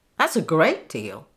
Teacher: the stress goes on the adjective great